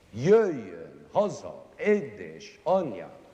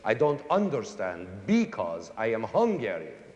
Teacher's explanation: Almost all the words in it are accented on the first syllable.